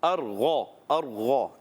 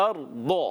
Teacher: ارض ایسے لگے گا جیسے دال کو آپ نے موٹا کر کے پڑھا ہے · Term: ضاد